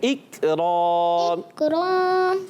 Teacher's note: اقرام میں کاف باریک رکھنا ہے، را کو پر کرنا ہے